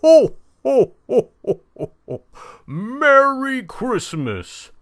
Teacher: Low, bring the voice down low. Make it breathy, so it's kind of hollow. We pull our tongue back to give our mouth some hollowness.